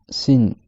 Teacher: Et la langue reste derrière les dents du bas. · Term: la lettre sin